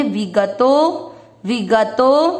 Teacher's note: वी मात्रा छोटी लंबा न खींचे, ग अक्षर पूरा है, ग में अमिक्स करेंगे, विगतो विगतो मम।